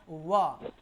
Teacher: जिसका उच्चारण दंत और ओष्ठ दोनों से एक साथ यानी कि स्पर्श करने से जो है उसका उच्चारण होगा, उसको दंतोष्ठ वर्ण कहते हैं। जैसे यहाँ पे देख सकते हैं दंत और ओष्ठ ये दोनों के दोनों मिलेगा और दोनों से दोनों मिलकर और एक नया वर्ण बनेगा जिसका नाम है व, और व को हम क्या बोलेंगे, दंतोष्ठ वर्ण बोलते हैं, ठीक है।